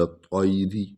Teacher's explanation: طا کو پر پڑھیں گے، لام کو طا میں ملائیں گے